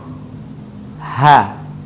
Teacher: huruf ini keluar dari tenggorokan yang terjauh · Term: huruf h